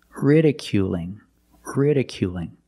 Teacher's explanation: it's a light L because it's between vowels it's different ridiculing ridiculing you still have the long u sound